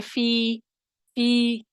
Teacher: فی کیا کرتے ہیں جب یا مدہ کو پڑھتے ہیں؟ دو حرکت کھینچتے ہیں